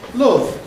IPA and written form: lʊv (love)